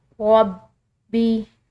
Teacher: با مشدد ہے، اس کو 2 دفعہ ادا کریں گے ، کیونکہ مشدد حرف جو ہے وہ 2 دفعہ ادا کیا